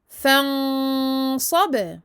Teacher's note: Il va y avoir ici un irfa, donc on va faire une nasalisation, mais cette fois-ci mufakhamah, parce que le sad est une lettre emphatique